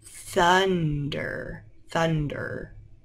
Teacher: your tongue is touching your teeth th- th-- and you can say it too- th-th I know